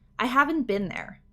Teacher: in american english we say with a short i